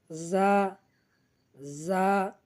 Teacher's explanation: জিহ্বার আগা সামনের নিচে দুই দাঁতের পেট ও আগার সঙ্গে লাগাইব